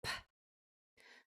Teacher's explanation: These are both voiceless, only air.